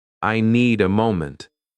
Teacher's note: Small words become softer. In the sentence, I need a moment, the strong words are need and moment.